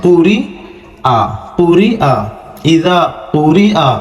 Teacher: یہاں پر یا کی آواز سے زیادہ ظاہر حمزہ کی آواز کریں گے